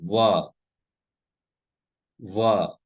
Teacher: वकारस्य दंतोष्ठम। व का उच्चारण स्थान दंतोष्ठ होता है।